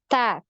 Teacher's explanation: untuk huruf ta ini ada aliran nafas atau yang biasa kita kenal dengan hamas ya. Jadi ketika di sukun ya untuk huruf ta ini ada decak ya, bunyi decaknya.